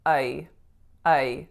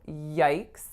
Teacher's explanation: So it's that really closed but still diphthongized I vowel.